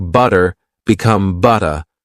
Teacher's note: Words like butter become butter with a gentle t sound instead of a hard d sound.